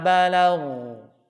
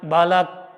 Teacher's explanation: Kalau seandainya diwakafkan, si huruf ghainnya ngalir. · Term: rakhawah